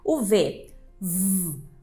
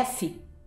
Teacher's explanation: v a gente faz né O mesmo Ponto articulatório só que o que muda é uma consoante vibrar as cordas vocais e outra não então a gente tem uma consoante surda e uma sonora vamos